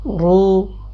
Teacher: را کے اوپر پیش تو را کی آواز موٹی